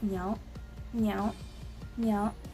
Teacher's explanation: because it has the second tone, we're gonna sound like we're asking a question again.